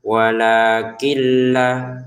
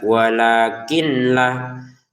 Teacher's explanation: kin di sini nun sukun bertemu lam dimasukkan tanpa dengungan.